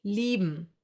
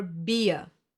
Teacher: I-E will be pronounced like a long, slow E, like for example in cheese.